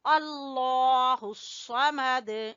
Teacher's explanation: قل هو اللہ احد اللہ الصمد، لفظ اللہ کو موٹا پڑھیں گے اور سواد کو پر پڑھیں گے اور دال کے اوپر قلقلہ کریں گے